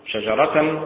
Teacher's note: شجرة متعل بالنبر على حركة الشين